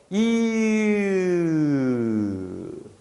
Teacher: 이에서 혀만 뒤로, 즉 전설에서 후설로 옮겼을 뿐인데 자연스럽게 모음이 으로 바뀐다는 사실을 확인할 수가 있죠